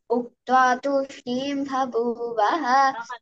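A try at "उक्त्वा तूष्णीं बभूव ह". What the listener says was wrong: Not to say babu.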